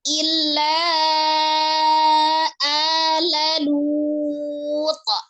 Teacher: Maka dibacanya illa ala lut. Nah, karena disukunkan huruf ta adalah salah satu huruf qalqalah, maka dipantulkan ya.